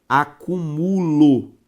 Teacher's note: a palavra que tá escrito é a palavra acúmulo com a sílaba tônica em mu